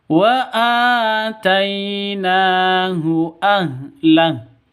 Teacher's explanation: Mad asli. Tai itu sifat lin, lentur, tidak boleh sentak ataupun dengung.